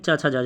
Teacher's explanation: च वर्ग, दूसरी लाइन, यानी च छ ज झ वाली। ये जो बोली जाती है, ये बोली जाती है तालु से।